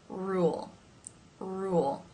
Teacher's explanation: the further back part of the tongue that is raised then to make the l sound which here is the dark l because it's at the end of the syllable